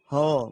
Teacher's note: ह जो है आपका कंठ से उच्चारण होता है